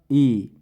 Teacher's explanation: जिनका उच्चारण करते समय ओंठ गोल नहीं होते हैं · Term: अवर्तुल